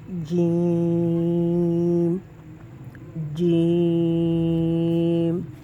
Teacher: جیم میں دیکھیں کہ آپ کی زبان اوپر اٹھ کے تالو کے ساتھ ٹچ ہو رہی ہے